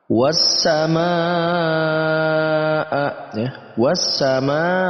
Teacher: Tapi karena dalam satu kata itu ada hamzah bertemu dengan hamzah, maka masuk dalam kategori mad wajib muttasil. Mad yang harus dibaca 4 sampai 5 harokat karena mad tabi'i bertemu dengan hamzah di satu kata.